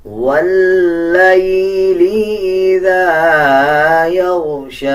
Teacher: شین کے اوپر کھڑا زبر ہے، کھڑا زبر کا مطلب ہوتا ہے کہ 1 سیکنڈ لمبا کر کے پڑھا جائے